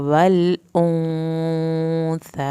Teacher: लाम साकिन को नहीं हिलाना, गुन्ना हो रहा है, देर लगेगी गुन्ने पे।